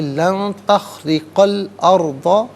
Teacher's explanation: را کی نیچے زیر ہے، را کو باریک کر کے پڑھیں گے. قاف پر زبر ہے، اسے ناظرین الارض کے لام ساکن کے ساتھ ملائیں گے.